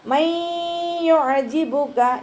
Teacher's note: നൂൻ സാക്കിനയ്ക്ക് ശേഷം ഇദാം ബിഗുന്നയുടെ അക്ഷരമായിട്ടുള്ള യാ വന്നു. നൂൻ സാക്കിനയെ യായിലേക്ക് ലയിപ്പിച്ച് ഉന്നയോടുകൂടി ഓതാൻ ശ്രദ്ധിക്കുക.